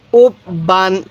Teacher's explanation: এই তানবিনের উচ্চারণ বাংলায় দন্তন্য উচ্চারণ হয়